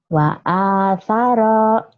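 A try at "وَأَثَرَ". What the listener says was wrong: Iya, tapi jangan panjang-panjang, satu alif aja. Dua ketukan. Wa athara.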